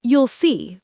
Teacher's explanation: The L sound is there, but soft, not strong. You will see sounds like you'll see with light L. Natural, flowing, not choppy.